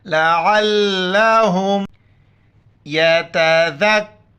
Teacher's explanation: आइन को गले से अदा करके लाम के साथ मिलाना है और हा को मीम के साथ। लाम ज़बर ला, आइन लाम